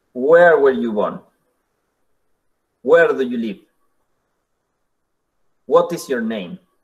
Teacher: Normalmente nosotros en español lo hacemos con cantito, o sea, un rising tone, pero en inglés le vamos a aplicar un falling.